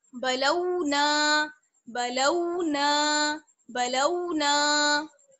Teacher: जैसे हमने बनाऊ हा में हा को खींचा है, वैसे ही बलाऊ ना में नून अलिफ जबर ना को खींचेंगे। और कितना खींचेंगे, दो हरकात के बराबर, या हम कह सकते हैं एक अलिफ की बराबर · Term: अलिफ मद्दा